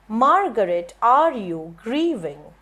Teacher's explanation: So we have 3 stresses on, one is on mar, one is on r, and one is on gree. All right. In Margaret you have 3 syllables, so you get this as stress, unstress, unstress.